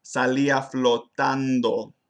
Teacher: I mostly assimilated my nasal consonants, like in the phrase salía flotando. I use the dental N.